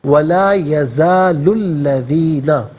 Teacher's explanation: لام پر پیش ہے تو اس کو پیش کو الذین کے لام کے ساتھ ملائیں گے, درمیان میں سے الف یعنی حمزہ کو حذف کیا جائے گا